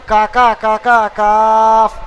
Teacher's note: জিভের গোড়া ওই সাথে উপরে তালের সঙ্গে লাগিয়ে কাফ উচ্চারণ হয়